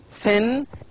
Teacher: thin is voiceless it makes no vibration there is no vibration at all